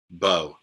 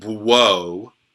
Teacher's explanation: So this isn't like whoa. You don't pronounce the W sound there. It's just bo. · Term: Holam wow